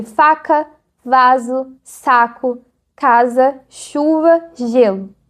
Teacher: faz um ruído contínuo, como se estivesse raspando. Se você prolongar o som de F ou de S, vai ouvir esse chado constante. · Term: fricativas